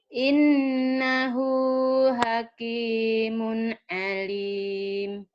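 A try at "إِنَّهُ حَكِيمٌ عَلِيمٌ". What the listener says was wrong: Oke ya, nanti gunanya tambahin dikit lagi biar tambah terdengar.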